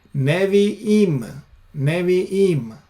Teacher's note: notice the schwa instead of the kamats, because the stress is on the last syllable, therefore it changes.